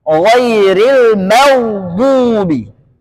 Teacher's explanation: gain enggak boleh qalqala karena huruf gain bukan huruf yang memiliki sifat Qalqalah · Baik, kemudian wal maghdubi, kata maghdubi, ghain sukun, jangan sampai ghairil maghdubi. Ghain nggak boleh qalqalah, karena huruf ghain bukan huruf yang memiliki sifat qalqalah. Maka bacanya ghairil maghdubi, tebal, ghain tebal, bot tebal. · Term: sukun murni